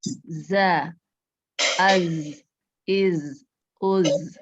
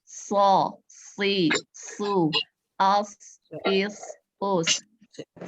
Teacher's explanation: Yang mahrojnya ada di lidah, ujung lidah, sejajar dengan gigi bawah. Jadi kalau waktu mengucapkannya itu berdesis.